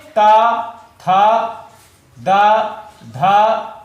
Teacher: इनका उच्चारण स्थान दंत होता है, यानी इनको दांत से उच्चारित किया जाता है, इनको दांतों से हम उच्चारित करते हैं। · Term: दंत वर्ण